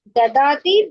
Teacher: దదాతిలో gives అనే దాంట్లో రెండు ఒకటే దాల్ వస్తాయి. ప్లెయిన్ దాల్, అల్ప ప్రాణాలు వస్తాయి.